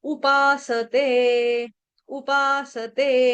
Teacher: और पा जो है वो दीर्घ है उपासते ते भी दीर्घ है